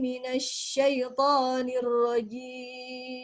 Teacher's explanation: Ada angin. Jadi huruf shin suaranya mengalir dengan cara menyebarnya angin dari dalam mulut.